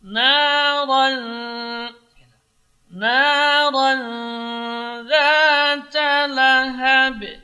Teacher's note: ra tebal, tapi ikhfanya tipis karena tanwin ketemu dengan za huruf tarqiq.